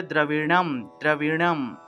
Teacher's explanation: দ্রবিণম মূর্ধন্য আছে, মূর্ধন্য উচ্চারণটা হলো ন, অর্থাৎ জিহ্বা উল্টিয়ে মূর্ধা দিয়ে আসলে মূর্ধায়ের সাহায্যে ন উচ্চারণ করতে হবে।